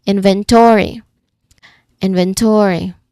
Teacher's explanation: there is a secondary stress on the third syllable to inventory.